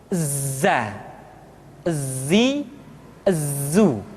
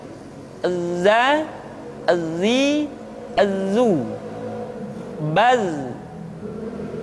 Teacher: ketika kita mengucapkan huruf Z, suara kita mengalir, akan tetapi nafas tidak boleh mengalir. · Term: al-jahr